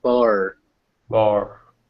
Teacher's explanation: if you kind of unround your lips when you say bohr you'll get bar